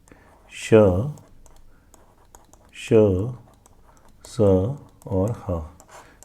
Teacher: ऊष्म व्यंजन है जिन्हें बोलते हुए गर्म हवा मुंह से बाहर निकले